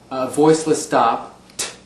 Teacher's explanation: T changes to TH, again, a voiceless stop, t, no engagement of the vocal cords